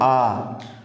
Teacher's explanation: जब आ बोलेंगे तो क्या होगा? पूरा मुख खुला रहेगा। इसे हम बोलते हैं विवृत स्वर।